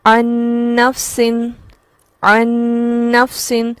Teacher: یہ رک کر ہم آواز کو ٹھہرائیں گے، اسے کہتے ہیں ادغام مع الغنہ